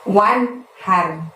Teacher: Wan-nya itu bunyi N-nya harus jelas ya teman-teman, karena nun mati bertemu hak. Haknya seperti biasa kita lafadzkan dari tenggorokan bagian tengah, jadi terdengar lebih lembut, lebih halus.